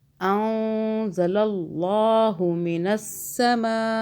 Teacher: نون ساکن پہ اخفا کیا 2 سیکنڈ کا، اخفا کا قاعدہ یعنی کہ چھپانا ہے نون ساکن کو